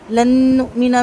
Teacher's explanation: لن نؤمن میں نون ساکن کے بعد نون آ رہا ہے، یہاں پر ادغام مال غنہ ہوگا، دو حرکت تک غنہ کریں گے، حمزہ پہ جھٹکا آئے گا اور نون کا زبر لمبا نہیں کریں گے۔